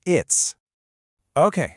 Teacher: That t sound and the s sound, they just melt together.